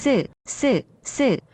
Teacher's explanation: When you pronounce 쌍시옷, you can actually feel your throat gets closed.